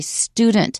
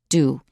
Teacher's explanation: With the d, t, n, l sounds plus u, in American English, we often omit the y sound.